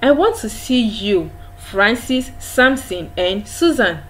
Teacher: Susan drops because that is the end of that discussion